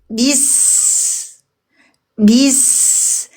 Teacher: Ketika ba bervokal i di ketemu huruf sin langsung kita ke huruf sin. Ujung gigi ujung lidah kita langsung di bawah. Berdesis keluar napas mengalir panjang · Keluar napas berdesis mengalir. Tapi bukan berarti huruf ba dihentakkan.